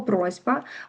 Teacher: Б зробіць С звонкім.